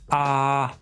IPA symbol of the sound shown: ɑ